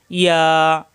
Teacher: জিব্বার মাঝখানে উপরে তালুতে একালিপ টান